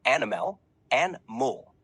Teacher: animal has a more relaxed pronunciation the middle syllable May shift to sound more like uh and the final L can be less distinct almost fading out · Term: casual British pronunciation